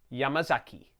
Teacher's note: Each syllable is the same length. If you find that difficult, try to put the stress on the first syllable, Yamazaki.